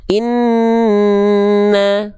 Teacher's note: Ghunah artinya apa? Mim tasydid atau nun tasdid yang dibaca dengung dua harakat. · Nunnya harus ditahan ghunah. Dengung dua harakat.